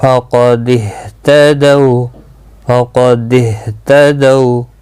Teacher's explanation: ہا ہلکی ہے اور سینے کی طرف سے سانس چھوڑتے ہوئے نکلتا ہے